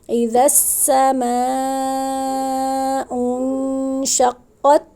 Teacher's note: یہاں پہ سما پہ مد متصل ہے، مد متصل کا کیا قاعدہ ہے؟ حروف مدہ کے بعد حمزہ اسی کلمے میں ہو تو مد متصل ہوگی، بڑی مد ہوگی، جس کو 4 سے 5 الف کے برابر لمبا کر کے پڑھیں گے